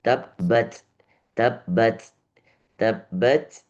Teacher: Ta yang sukun tabbat. Ah ini juga ada desisnya meskipun kecil.